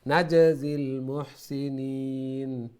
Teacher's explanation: জিম ওইটা কলকলা হবে, একটু সাউন্ডটা লড়বে, একো সাউন্ড।